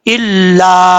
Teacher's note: अलिफ के ऊपर मद है, मद मुनफसिल कहा जाता है इसको, अढ़ाई अलिफ के बराबर इसको लंबा करेंगे